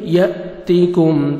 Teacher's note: حمزہ کو مد جزم ہے جھٹکے سے پڑھیں گے. یأتیکم تا کو باریک پڑھیں گے.